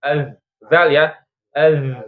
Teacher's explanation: Dia itu jahar, maka pita suaranya itu akan bergetar.